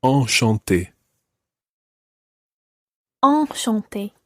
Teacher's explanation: Now, we've already had quite a few of these nasal sounds in bonjour and bonsoir. Enchanté is a slightly different nasal sound, and your mouth needs to be wider for that.